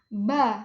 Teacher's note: Ba ee letupan ketika mengeluarkan bunyi ba itu ba adanya letupan kecil. Ba majhur bersuara atau adanya getaran.